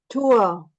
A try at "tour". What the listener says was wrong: Tour, very good.